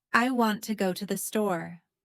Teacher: Notice the rhythm. Strong, weak, strong, weak, strong. This is the heartbeat of English.